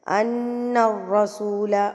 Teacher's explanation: وَشَهِدُوا أَنَّ الرَّسُولَ، ان پہ گنہ ہوگا، نون مشدد یعنی کہ نون کے اوپر جب تشدید آ جاتی ہے تو وہاں پر گنہ کیا جاتا ہے، ناک میں آواز کو لے کر جایا جاتا ہے